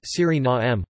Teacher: with the main stress on the third syllable and a schwa terminal vowel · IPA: [ˌsyriˈnaːmə]